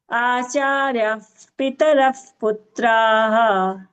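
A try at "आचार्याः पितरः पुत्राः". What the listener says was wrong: Acharya. There is a dirgham you missed, okay? And after Visarga, if it is pa coming, you have to use if sound, right? That if sound was not clear, Bhagini. Acharya Pitarah Putraha.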